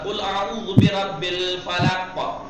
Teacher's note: काफ जबर का मत कर दीजिएगा, पूरी हरकत नहीं देनी है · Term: कलकला